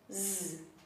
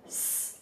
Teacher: another example would be z, that doesn't exist in Spanish. However, the unvoiced version, s, or voiceless, s, does exist in Spanish.